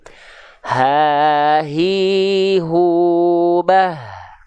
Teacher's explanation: H besar dan hamzah itu dilafalkan dari pangkal tenggorokan, bukan dari dada, dari tenggorokan paling bawah atau tenggorokan paling dalam.